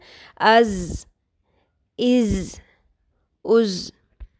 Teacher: یہ تھوڑی سی buzzing sound فیل کر رہے ہیں آپ، گونج. اس کو شدت سے پڑھنا ہے، پورا زور لگا کے. · زا کی ادائیگی میں شدت ہوگی اور اس میں تھوڑی بہت سیٹی کی بھی آواز ہوگی